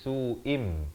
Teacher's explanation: Apa yang ditukarkan? Bunyi nun kepada bunyi mim. Daripada su'in jadi su'im. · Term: iqlab